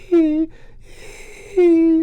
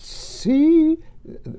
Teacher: there's a little hiss of air before my voice starts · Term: phonatory onset delays